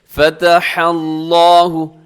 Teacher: آگے دیکھیے گا قالوا أَتُحَدِّثُونَهُم بِمَا فَتَحَ اللَّهُ، لفظ اللہ ہے، لفظ اللہ سے پہلے ہا کے اوپر کیا چیز ہے، زبر ہے، تو لفظ اللہ کو پر پڑھا جائے گا، موٹا پڑھا جائے گا